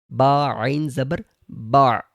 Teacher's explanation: عین کے اوپر آواز بالکل رک گئی۔ آپ سننے میں آپ کو سمجھ آ رہی ہوگی کہ عین کے اوپر آواز بالکل رک گئی۔